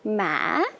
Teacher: the fourth one is going up and down